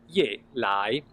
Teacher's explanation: Now, Ye Lai is falling and rising